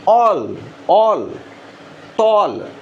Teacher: ఇది ఈ సౌండ్ ఉన్నప్పుడు మన లిప్స్ పలికేటప్పుడు ఎలాంటి పొజిషన్లోకి వస్తాయి అంటే హాఫ్ రౌండెడ్. అదే ఆ సౌండ్ ఉన్నప్పుడు ఖచ్చితంగా అది ఫుల్లీ రౌండెడ్ పొజిషన్లో ఉంటుంది మన లిప్.